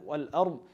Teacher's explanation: dad, you don't bounce on it, you don't make like a dal.